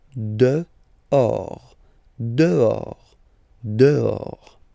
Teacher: Okay, so remember final S not pronounced, and then this H in French doesn't exist phonetically, so you don't pronounce it.